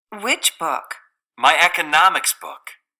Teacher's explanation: the pitch is a lot higher for that particular Focus word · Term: Focus words